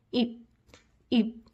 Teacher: With your lips gently pressing each other at the end.